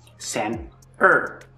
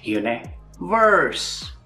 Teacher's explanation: the weak R is quicker, shorter, smoother, and the strong R is longer, deeper, and darker.